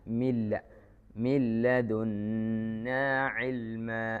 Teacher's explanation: നൂന് തികച്ചും ലാമിലേക്ക് ലയിപ്പിച്ചു, മണിക്കാനില്ല. ആ നൂനിന് എന്താ ഉച്ചാരണം തീരെ കേൾക്കൂല.